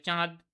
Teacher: দেখুন চাঁদের মধ্যে চ রয়েছে এবং চটা অবশ্যই তালব্য ব্যঞ্জন ধ্বনি